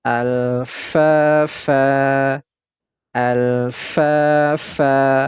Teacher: Huruf lam sukunnya ini kita baca, kemudian huruf fa kita baca 2 harokat. Kemudian huruf fa ini berharokat fathah tanwin.